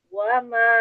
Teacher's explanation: Wa memang dia dibuka dimonyongkan tapi dilembutkan suaranya. Wama wa jangan wama lembutkan.